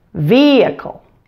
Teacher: that first syllable in the word vehicle has the primary stress so make sure to say that syllable loud and clear vehicle the middle syllable is weak you'll not clearly hear that